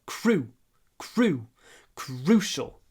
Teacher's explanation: you need to clip the oo before the sh, the unvoiced sh.